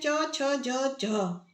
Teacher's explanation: हिंदी की तालव्य ध्वनियां हैं